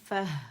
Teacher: again فہ ہم کیا کریں گے کہ تائے مربوطہ کو ہم نے ساکن کر دینا، اس کی آواز جو ہے ہا ساکن میں بدل جائے گی